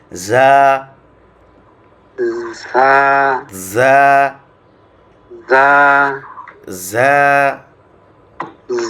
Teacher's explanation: 12 নম্বর মাখরাজ হচ্ছে জিহ্বার আগা সামনের নিচের দুই দাঁতের পেট ও আগার সাথে